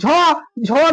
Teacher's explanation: झ झ में हो की ध्वनि सुनाई देती है। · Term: महाप्राण